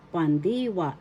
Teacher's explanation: First syllable pan, second syllable di, third syllable wa. The accent is in the second syllable di.